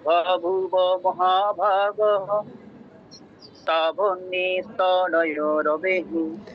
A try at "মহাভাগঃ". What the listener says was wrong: আচ্ছা, হয় মহাভাগঃ বলতে হবে, না হয় মহাভাগস বলতে হবে। মহাভাগও বললে হবে না, হয় ভাগস নয়তো ভাগঃ।